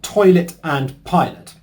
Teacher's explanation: Both words are 2 syllables, and the stress in both words is on the first syllable, toy and pie.